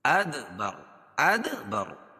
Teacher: یہ حروف قلقلہ کے 5 حرفوں میں سے ہے، جب ان پر جزم ہوتا ہے تو وہاں قلقلہ ہوتا ہے، یعنی جنبش ہوتی ہے، آواز ایک مرتبہ لگنے کے بعد پھر دوبارہ پیچھے ہٹتی ہے